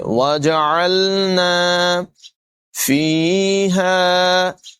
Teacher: عین کو لام سے ملائیں گے، عین کی آواز نمایاں کریں گے